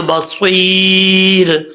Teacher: صاد حروف مستعلیہ میں سے پر پڑھا جائے گا، آگے یا ہے مدہ، ایک الف کی مقدار لمبا کریں گے، را کے اوپر جب یہاں پہ وقف کریں گے تو را بریک پڑھا جائے گا، ملا کے پڑھیں گے یہاں، یعنی سٹاپ نہیں کرنا چاہتے تو پھر را کے اوپر 2 پیش ہیں، را پر پڑھا جائے گا، ٹھیک ہے۔